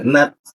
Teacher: kalau sifat huruf ta itu ada seperti desis tipis dia.